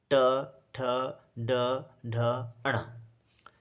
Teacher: अच्छा, इनको बोलने से हमारे जिह्वा का सामने वाला हिस्सा काम करता है। ऐसे लगता है कि हमारे जिह्वा के नोक से ही ये व्यंजन निकल रहे हैं। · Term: मूर्धन्य व्यंजन